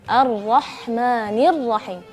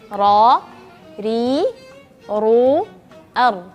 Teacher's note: Jadi lidah itu naik sekali dong. Getarannya sekali. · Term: huruf ra